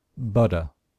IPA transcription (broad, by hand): ˈbʌt̬.ɚ